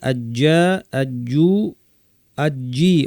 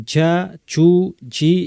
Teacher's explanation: আজ্জু বাতাস ছাড়া বলতে হবে। আজ্জু আজ্জি, অনেকে ঝা চু ঝি এভাবে বাতাস সহ বলেন, এটা ভুল।